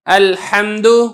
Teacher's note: میم کے اوپر آپ نے آواز کو مخرج کے اندر بند کر دینا ہے اور فوراً بعد آپ نے دال کو ادا کرنا ہے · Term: میم ساکن